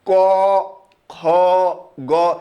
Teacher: আপনি যখনই ক খ গ উচ্চারণ করবেন তখন এটা আপনার কণ্ঠনালী থেকে সরাসরি ধ্বনিগুলো বের হয়ে আসবে